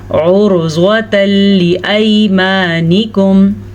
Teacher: उर्ज़्वतल लिअयमानिकुम, उर्ज़्वतल, रॉ साकिन से पहले वाले हर्फ पे पेश है तो हमने रॉ को पुर पढ़ना है, ज़्वाद को भी पुर पढ़ना है क्योंकि ज़्वाद हरूफ़े मुस्तालिया में से है और हरूफ़े मुस्तालिया हमेशा ही पुर पढ़े जाते हैं।